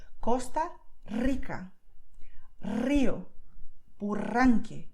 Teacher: It's just chilling inside of your mouth, and when the air comes out, your tongue goes all wobbly